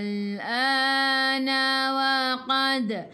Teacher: Dal qalqalah sughra lantunannya kecil.